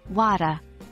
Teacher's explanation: Australians often elide the R sound at the end of words. So, water might sound more like wada.